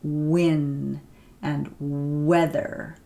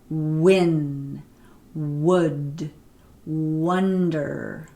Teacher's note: we call it bilabial because your lips are completely round you're using both your lips so at the beginning of a word this is a consonant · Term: bilabial Glide